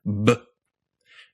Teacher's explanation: The thing that makes a B and the thing that makes a B a voiced consonant is the fact that the buzzing that happens goes on before your lips pop open. B.